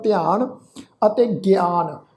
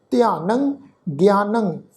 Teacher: पर नन्हे उत्ते टिप्पी की मात्रा का नासिक उच्चारण है जी ध्यानं ज्ञानं।